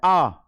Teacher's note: जितने अक्षर हैं सबसे ज्यादा अगर मुंह कहीं खुलता है तो वो आ में खुलता है, क्योंकि ये बड़ा वाला आ है, आ। जब आप आ बोलोगे तो पूरा मुंह खुलेगा।